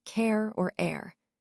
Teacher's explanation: starting with an E sound and gliding into a schwa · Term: diphthong